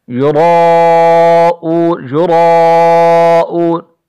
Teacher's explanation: را موٹا بھی پڑھا جائے گا اور یہاں پر مد بھی واقع ہے